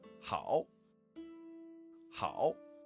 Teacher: with the full third tone down and up version